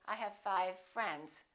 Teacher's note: we would blend them together and say i have five friends the only difference between the v and the f is that v is voiced and f is voiceless otherwise the lips are doing exactly the same thing